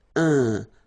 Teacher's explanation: So it's nasal and it's un. So it really goes in your nose. You don't pronounce the M at all.